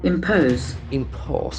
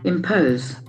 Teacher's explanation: It is made up of two syllables. Impose, and the accent falls on the second syllable. Impose. And the letter O has got a O sound.